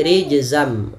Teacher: nunnya diganti dengan mim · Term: Idam